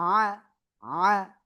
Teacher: এবার আমরা এটা আমি একটু বলি। আইনের উপরে জবর আইন, জবর আ, গলা চেপে উচ্চারণ করব